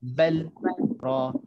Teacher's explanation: Jadi kena baca dengan izhar. Jelaskan lam dengan ra.